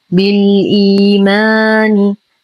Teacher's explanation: لدينا يا ساكنة ما قبلها همز مكسور فهو مد بدل يمد بمقدار حركتين للإمام حفص.